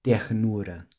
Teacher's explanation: Another feature of the Carioca accent is the pronunciation of certain R's with a guttural sound, as in the word ternura.